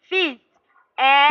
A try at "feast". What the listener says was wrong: No, I didn't say feed. Feast.